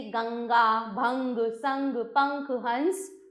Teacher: इसका उच्चारण करते समय हवा नाक से बाहर निकलती है। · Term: अनुस्वार